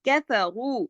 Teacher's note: रा को मोटा पढ़ेंगे पेश की वजह से